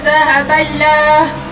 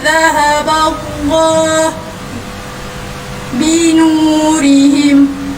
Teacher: Lafaz Allah di sini, lafzul jalalah, perlu dibaca dengan tebal kerana huruf sebelumnya baris atas. Jangan baca zahaballah.